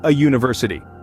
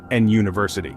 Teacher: even though University begins with a vowel it sounds like it starts with a y a consonant sound